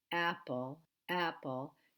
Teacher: has a name in linguistics it's called the glottal stop and in English every word that you begin with a vowel you will automatically make that sound you will make that glottal stop